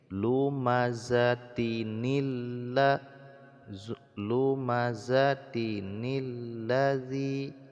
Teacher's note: tanwin apabila dia diwasalkan disambungkan bacaannya dengan huruf alif dan lam ya maka di baca Nun seperti ini lumazatinilla lumazzatinilladzi jadi tanwin itu pada dasarnya dia Nun